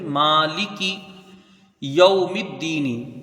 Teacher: یہاں واو لین ہے، حروف مدہ سے اس کی مقدار کچھ حروف لین کی کم رہتی ہے. میم کو یہاں دال سے ملائیں گے، لام تعریف کا ادغام شمسی ہوگا.